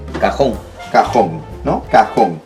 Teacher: Creo que ya te diste cuenta de que en el caso de cajón, sí vamos a colocar la tilde, porque la fuerza está ya marcada en la O. En la última sílaba